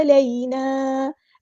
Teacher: عین کو وسطی حلق یعنی مڈل تھروٹ سے ادا کریں گے، یا لین آ گئی ہے، یا ساکن سے پہلے زبر ہے، نرمی سے موڑیں گے